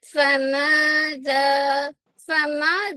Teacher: ज़बर आ मजा दाल को जल्दी और नरमी से फमा फमा दोनों अलिफ बारीक होगी क्योंकि मीम भी लाइट